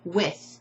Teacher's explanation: if you hold your voice box you'll notice the vibration ends right after the I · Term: voiceless th sounds